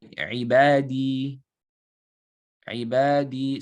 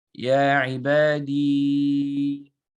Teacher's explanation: There's a ya with a sukoon, it's preceded by a kasra. So it will just be 2 counts. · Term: ya sakina